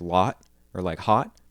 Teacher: for most American dialects that sound lives really far back in the mouth